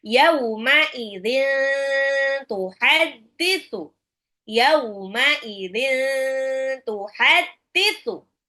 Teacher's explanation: Kebetulan tanwin ketemu ta agak ditahan.